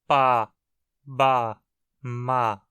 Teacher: o M é uma consoante bilabial, pronunciada com os dois lábios juntos. Igual a um P e um B.